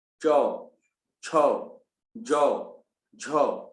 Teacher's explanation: अब चौ वर्ग जो है वो तालु से निकलती है।